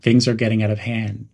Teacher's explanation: Use a rising intonation on out of hand to reflect the growing issue. Keep the phrase casual in tone.